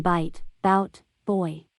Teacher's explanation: sequence of two vowels run together as a single phonological unit